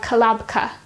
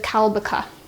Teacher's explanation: we need to insert our helping vowel A, but this time it's going to be put in between the final 2 consonants of our noun stem. So we have kalabka instead of kalbaka.